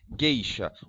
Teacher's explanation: o som do U não aparece, o G fica sozinho. Então, o meu encontro vocálico aqui não são 3 vogais, não é vogal, semivogal.